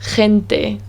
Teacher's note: the g would make that dreaded sound that a lot of english people tend to avoid when learning spanish which is the very throaty h sound